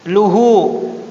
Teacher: Luhu afwan, dhamma kecil. Dhamma kecil itu panjang dua harokat. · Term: mat-tabi'i